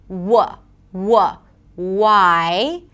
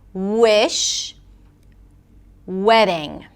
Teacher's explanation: The W is different because the lips come close together. They don't touch and there is no friction. Technically, the back of the tongue goes up as well. W, W, 'why' - no friction, you can't hear the vibrations.